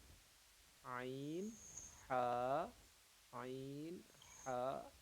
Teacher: تو ہا جو ہے نا وہ درمیان حلق سے پڑھنا ہے